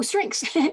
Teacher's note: Strengths is interesting because here, phonemically, there are 3 phonemes at the end of that word, but phonetically there are 4 because we add a k sound